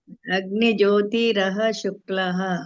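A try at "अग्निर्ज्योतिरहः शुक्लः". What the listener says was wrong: ರಕಾರ ಕೇಳ್ತಾ ಇಲ್ಲ ಇಲ್ಲಿ ಅರ್ಕ ಇದೆಯಲ್ಲ ಅರ್ಕತ್ತು ಅದು ರ ಅಂತ ಮುಂಚೆ ಬರಬೇಕು ಅಗ್ನಿರ್ ಅಂತ ಬರಬೇಕು ರಕಾರ ಕೇಳಿಸಿಲ್ಲ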